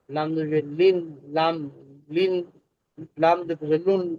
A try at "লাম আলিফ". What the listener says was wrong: লাম আলিফ, আপনি সবসময় আলিফটা ছেড়ে দেন। আলিফটা বলতে হবে, লাম। লান, লিন, লুন। আরো আহ, আরেকটু দেখতে হবে আর কি, আর মুখের জড়তা দূর করতে হবে বেশি বেশি চর্চার মাধ্যমে।